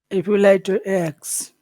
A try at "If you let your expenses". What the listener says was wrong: Now, is it X? Well, what is the big sound in the word expenses? Which sound is big in that word? Pen, pen, pen. So those sounds in the middle, it becomes like one little sound. Let your X, let your X, let your X, let your X. If you let your expenses